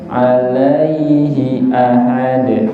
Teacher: Haknya alaihi jangan dipanjangkan, satu ketukan aja.